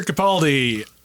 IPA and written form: kəˈpældi (Capaldi)